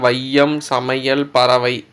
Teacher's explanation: முதல், இடை, கடை ஆகிய சொற்களில் வரும்போது 2 மாத்திரை அளவிலிருந்து 1 மாத்திரை அளவாகவும் 1.5 மாத்திரை அளவாகவும் ஒலிக்கும். ஐகார சொல்லில் முதல்ல வந்தால் 1.5 மாத்திரை அளவு, இதே வந்து சொல்லோட இடையிலும் இறுதியிலும் வந்தால் 1 மாத்திரை அளவு. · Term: ஐகார குறுக்கம்